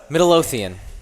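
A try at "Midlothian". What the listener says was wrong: throw another syllable in there.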